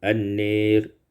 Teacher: Pada ayat yang keenam, an-nir imalatu fathatin nun wal alif, dibaca imalah fathah nun dan alif